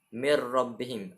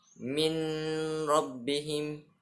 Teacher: kita mentasydidkan huruf ra tanpa membunyikan huruf nun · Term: idgham bila gunnah